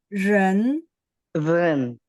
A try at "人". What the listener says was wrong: oh, masih belum nadanya. Ren.